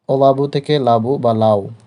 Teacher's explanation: বা আদি স্বরধ্বনি লোপ পেয়ে যায়